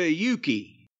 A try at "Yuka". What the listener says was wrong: Yuka. You said Yuki. It's Yuka, not Yuki. Yuka Sakazaki, not Yuki.